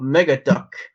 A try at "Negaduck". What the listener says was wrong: Negaduck, not Mega. Oh, okay, it sounded like Mega.